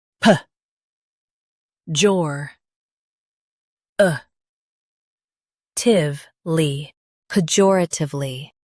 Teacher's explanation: Stress jor and keep pe soft.